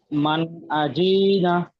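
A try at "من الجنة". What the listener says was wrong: আজি না টান দিয়েছেন কেন? আজি না, জি টান আছে কি? জাল, জাল জের জি, ওটা কি টান আছে?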